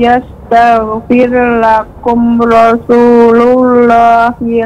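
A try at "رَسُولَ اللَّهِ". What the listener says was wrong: Lebih ditajamkan lagi pada huruf sin Ibu. Rasu, karena ujung lidah dengan gigi seri bawah. Yastaghfir lakum rasulullah.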